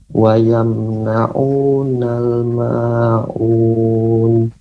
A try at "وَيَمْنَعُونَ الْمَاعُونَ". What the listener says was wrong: Untuk ainnya Bapak lebih dilembutkan, ويمنعون الماعون. Tapi terus dilatih lagi Pak ya, mengucapkan huruf ain ya, ini catatannya.